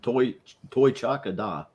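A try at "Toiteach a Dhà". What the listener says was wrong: Yeah, that's pronounced Gar with a G, not a D.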